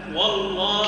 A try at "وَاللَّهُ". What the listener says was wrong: كيف نقول والله؟ وش عملنا؟ فخمنا الواو. لا مش والله كان الواو.